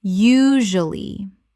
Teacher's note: Three syllables in natural speech, the middle syllable is compressed.